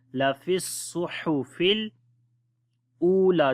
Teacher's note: Swad we read in heavy sound. Ha from the middle of the throat.